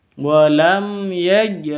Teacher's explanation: mim sukun bertemu dengan ya, bacanya jelas, jangan dibaca dengung ya, tapi jelas karena izhar safawi. Walam ya, mim sukunnya jelas, ya-nya juga jelas.